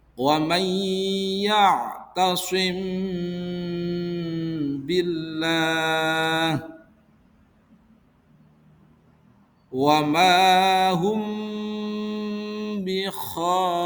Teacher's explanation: Idhar syafawi Apabila ada mim sukun bertemu dengan ba, maka cara membacanya yaitu dengan suara samar antara suara mim dan ba pada bibir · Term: ikhfa syafawi, Ikhfa Syafawi